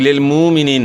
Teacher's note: یہاں حمزہ ساکن کی وجہ سے حمزہ ساکن میں جھٹکا ہوگا